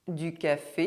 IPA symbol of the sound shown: k